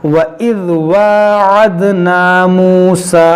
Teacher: वइज़ वाअदना मूसा 40, अब यहाँ पर देखें मद है, यहाँ खड़ा ज़बर के बाद हमज़ा दूसरे कलमे में है, तो यहाँ मद्दे मुनफसिल होगा, खींचेंगे इसको